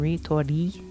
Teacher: It's kind of a mix between an L sound, so li, and a ri sound